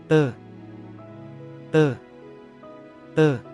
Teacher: Make the shape of E, but say oo and push your chin forward. It's the mid-tone.